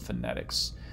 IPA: fənɛ́tɪks